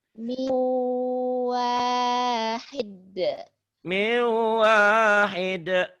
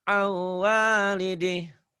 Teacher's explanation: Min jadi miu, miu wahid, an jadi au, idgham bi gunnah. Dilebur dimasukkan disertai dengan dengung.